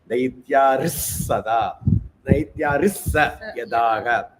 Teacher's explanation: Daityarihi and sa becomes Daityaris. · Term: Visarga